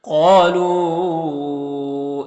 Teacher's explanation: قاف حروف مستعلیہ میں سے پر پڑھیں گے، یہاں پر الف مدہ ہے، ایک الف کے برابر کھینچیں گے.